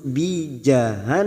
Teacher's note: Nun yang bertasdid gunna musaddadah kita dengungkan dan ditahan selama 3 harakat